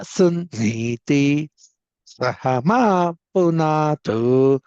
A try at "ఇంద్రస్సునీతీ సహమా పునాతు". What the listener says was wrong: పునాతు కిందకి అంటున్నారు, అనుదాత్తం చెబుతున్నారు. పునాతు సమాహారం చెప్పాలి.